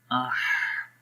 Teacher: بھی ہا کی آواز کو تھوڑا سا ریلیز کریں گے، آہ، تو جب ہا کی آواز کو پڑھتے ہیں تو آواز جو سانس ہوتا ہے وہ جاری ہو جاتا ہے تھوڑا سا